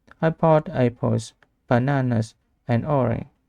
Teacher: When listing things, your voice rises until the final item, then falls. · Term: List intonation